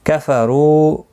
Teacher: کفروا رو و مدہ ہے، ایک الف کی مقدار کے برابر کھینچ کر پڑھیں گے، رو پور پڑا جائے گا پیش کی وجہ سے